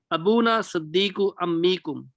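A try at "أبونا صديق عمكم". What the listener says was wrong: नहीं, सद्दी को नहीं पढ़ना, दाल के शद के साथ नहीं है, ये दाल की शद के बगैर है। सदीक क्या लफ्ज है?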